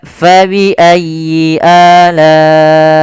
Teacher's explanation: Panjang untuk mad wajib muttasil dari Imam Syatibi, dari Imam Hafiz an Asim dari jalur Imam Syatibi adalah 4 atau 5 harakat. Maka fa bi ayyi ala'i 4.